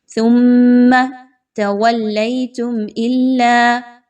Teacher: حصہ ہے آیت کا، بہت ساری قواعد ہیں۔ سب سے پہلے میم مشدد ثا اور میم کو آپس میں ملاتے ہوئے میم مشدد کا غنہ کیجئے